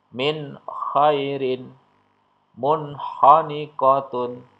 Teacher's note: ko ya nun sukun atau tanwin ketemu dengan huruf k ya maka dia nun sukun dan tanwinnya dibaca dengan jelas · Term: Idhar halq